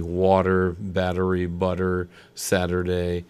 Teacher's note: a vowel t vowel pattern appears the t is pronounced as a d